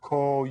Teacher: make that o real round